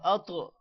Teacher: طا پر قلقلہ ہوگا اور طا موٹا بھی ہوگا